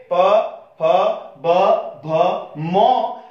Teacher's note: प, फ, ब, भ, म बोलते समय हमारे दोनों होंठ आपस में मिल रहे हैं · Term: ओष्ठ व्यंजन